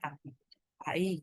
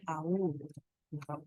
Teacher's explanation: huruf vokalnya ada 2 dan dibaca 2 juga yang kita dengar. Jadi kalau ada gabungan vokal A dan I, bacanya AI, AI gitu ya. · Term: diftong